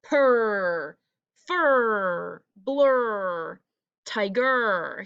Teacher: the r sound at the end of each one is really stretched out